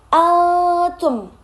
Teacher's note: bertemu salah satu huruf ikhfa yaitu berupa ta. Jadi dibacanya samar